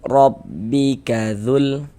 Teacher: Wajhu rabbika dzul, huruf ra memiliki harokat fathah ya, baris fathah, maka huruf ra dibaca tafkhim, dibaca tebal, sehingga ketika kita mengucapkannya itu ya dengan menaikkan pangkal lidah kita